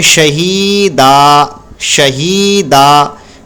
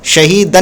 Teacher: और याद रखें जो दो ज़बर है जब इस पर वक्फ़ करते हैं यानी रुकते हैं, हम यहाँ पर रुक रहे हैं, ये देखिए तो की आयत आ गई तो इसलिए हम यहाँ पर रुकेंगे। जब रुकेंगे तो दो ज़बर को अलिफ से बदल देंगे, यानी एक ज़बर से बदल देंगे और अलिफ पढ़ेंगे